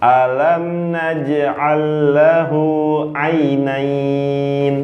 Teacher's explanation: Lahu 2 harokat saja karena bertemu dengan waw sukun. Dhamma bertemu waw sukun jadi 2.